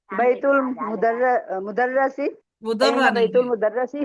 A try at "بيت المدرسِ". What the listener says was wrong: مدرہ نہیں مدرسی ہے، را نہیں ہے، مدرسی.